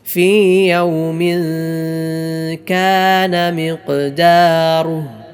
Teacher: ആ തൻവീന് ശേഷം കാഫ് വന്നു. സാക്കിനായ നൂനിനോ തൻവീനോ ശേഷം കാഫ് വന്നാൽ ഇഖ്ഫ ആണ്. അതിനാൽ മണിച്ചുകൊണ്ടാണ് ഉച്ചരിക്കേണ്ടത്. ഫീ യൗമിൻ കാന മിഖ്ദാറുഹു ഫീ യൗമിൻ കാന മിഖ്ദാറുഹു ഖാഫ് നാവിൻ്റെ മുരടും അതിനോട് നേരിടുന്ന മേലെ അണ്ണാക്കും.